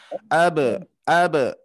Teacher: huruf ba ketika sukun qalqalahnya ringan ya